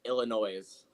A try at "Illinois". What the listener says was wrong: You know, people from Illinois would smack you for pronouncing the S. Illinois.